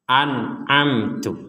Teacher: nun mati bertemu ain dibaca jelas mim mati bertemu ta juga dibaca sama-sama jelas